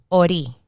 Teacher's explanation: In Spanish, ori. The R rolls.